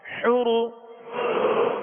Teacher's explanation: را کو پر پڑھیں گے، را پر پیش ہے